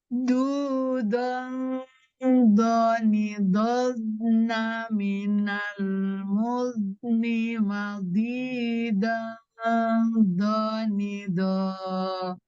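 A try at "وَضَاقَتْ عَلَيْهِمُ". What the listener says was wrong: Oke, makin ke belakang makin hilang rohnya kayaknya ya. Lembutnya. Harusnya nggak bo, jangan sampai tegas ya.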